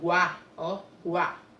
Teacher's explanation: o U, ele tem uma intensidade menor, semivogal. O A, guá, tem uma intensidade maior, vogal. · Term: ditongo